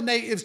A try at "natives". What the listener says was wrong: Natives. No hard T in there.